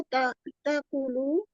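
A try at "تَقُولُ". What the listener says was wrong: ये ताकुलू तो नहीं है, आपने ऐसा क्यों पढ़ा ताकुलू? तकूलू यकूल, तकूल, तकूलू। कू जो है ना उसके आगे वाव भी है, उसको आपने लाइट नहीं पढ़ना।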